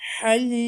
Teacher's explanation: Mette arızdır ve dört elif miktarı uzatılarak okunur.